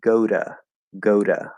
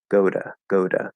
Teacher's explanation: voiced which all vowels are voiced it's very very likely that it's going to change that t into a d which is the voiced version of t and in particular it's going to turn into a flat d · if the sound before the preposition 2 is voiced which all vowels are voiced it's very very likely that it's going to change that t into a d which is the voiced version of t and in particular it's